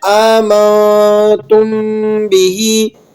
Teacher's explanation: اب یہ میم ساکن ہے آمنتم کے اندر اور اس کے بعد آنے والا حرف ہے بھی، تو یہاں پر ہم نے اخفاء کے ساتھ غنہ کرنا ہے، یعنی تھوڑی دیر تک کے لیے آواز کو ناک میں رکھنا ہے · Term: اخفاء شفوی